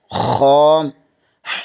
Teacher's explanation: حلق کے اوپر والے حصے سے ادا ہوتا ہے